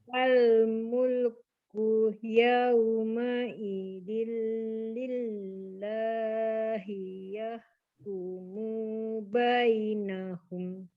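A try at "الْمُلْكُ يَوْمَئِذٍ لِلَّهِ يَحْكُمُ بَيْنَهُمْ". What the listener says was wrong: Kemudian yahkumu mu tidak panjang Ibu. Yahkumu bainahum.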